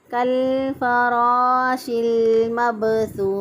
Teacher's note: چونکہ وقف سے پہلے جو ہے وہ واؤ مدہ موجود ہے، اس لیے اس لیے اس کو حرف مدہ کو یہاں پر ہم میکسیمم 3 الف کے برابر لمبا کر سکتے ہیں